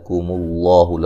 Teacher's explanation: لفظ اللہ کو موٹا ادا کریں گے، اس سے پہلے حرف پر پیش ہے